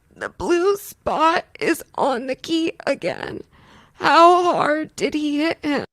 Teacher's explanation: overwhelming voice quality would be strain, right? We get this sort of tightness in the throat.